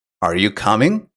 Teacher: if you ask a yes no question like are you coming your voice will usually rise at the end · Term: intonation